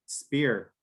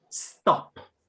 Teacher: if I say spear, the paper doesn't move. But when I say stop, the paper moves with the breeze. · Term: aspiration